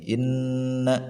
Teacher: Ada hunun bertasydid yang warna kuning ini nih. Inna maka ditahan, didengungkan sebanyak 2 harakat atau 1 alif